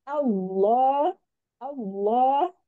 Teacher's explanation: jadi jangan sampai seperti ada huruf wau karena itu biasanya posisi bibir kita yang berubah ya pangkal lidah yang naik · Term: tafhim